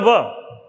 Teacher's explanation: दंतोष्ठ यह भी संयुक्त रूप से बोला जाता है दंत ओष्ठ, यानी दंत और ओष्ठ से बोले जाने वाला वर्ण